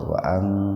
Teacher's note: nun mati ketemu dengan ta, dibacanya samar tapi sepintas saja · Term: ihfa akrob